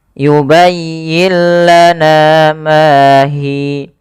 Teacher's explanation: idgam bila guna ini idgham yang Kamil yang sempurna jadi idghamnya secara utuh langsung dihilangkan